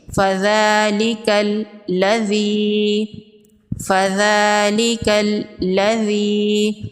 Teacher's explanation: ذال پر کھڑی زبر ہے، ایک الف کے برابر کھینچ کے پڑھیں گے۔ لام پر تشدید ہے، لام کو ڈبل پڑھیں گے، یعنی سختی سے پڑھیں گے۔ ایک دفعہ ساکن پڑھیں گے اور دوسری دفعہ متحرک پڑھیں گے۔ فَذَلِكَ الَّذِي، فَذَلِكَ الَّذِي، ذال کو نرمی سے پڑھیں گے۔